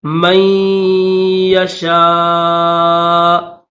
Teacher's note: صرف غنہ کریں گے نون کو ظاہر نہیں کریں گے